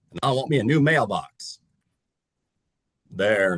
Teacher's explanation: the grandma's a little more like tight behind the nose and a little more bright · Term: country like nasly twang